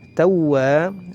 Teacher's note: huruf wawu bertasydid, maka harus sedikit ditekan, ya. Tawwa, ya, dan ditahan satu harokat.